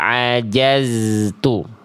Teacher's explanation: zainnya tidak mantul dan tidak terputus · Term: zai sukun